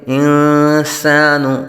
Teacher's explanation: سین حروف صفیریہ میں سے ہے، سیٹی کی طرح تیز آواز نکلے گی۔